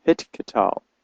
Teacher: I pronounce the tav, both the hard and the soft tav, with a hard sound t, like in modern Hebrew.